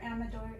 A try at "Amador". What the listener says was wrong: Amador. Like Amador. Amador. Like you gotta roll those R's.